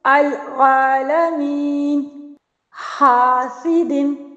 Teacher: الف سے پہلے باریک حرف آ گئے تو الف بھی باریک ادا ہو رہا ہے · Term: باریک الف